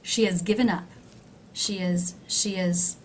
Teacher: do you see how the word has is very low in Pitch it's actually been reduced and I've have dropped the H she is she is she